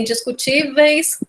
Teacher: Nesse caso, o ditongo é uma situação de ditongo decrescente, inclusive, né? Porque em indiscutíveis, o Ezinho tem o som mais forte do que o I, né? Então, é um caso de descida.